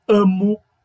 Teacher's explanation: o acento tônico do meu verbo vai cair no radical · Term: formas rizotônicas